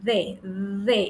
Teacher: colocan bien su lengüita entre los dientes no porque es interdental